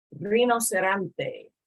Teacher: Whenever the letter R comes at the beginning of a word, it's going to have that sound, you know, like the motorboat sound.